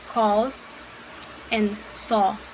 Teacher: This is a short vowel sound and is the most open position and round sound from back vowels. We have it in words like call and saw.